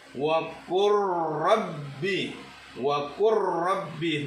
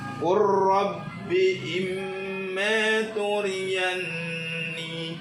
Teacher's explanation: lam yang dalam fi'il amr masuk ke dalam huruf ra-nya. Qur rabbi imma turiyani. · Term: lam mati